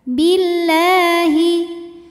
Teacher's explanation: lam pada lafaz Allah dibunyikan secara tarqik karena huruf sebelumnya kasrah maka bacanya tipis · alif lam menghadapi huruf syamsiyah yaitu lam, maka alif lam tidak dibaca atau biasa disebut dengan idgham syamsi.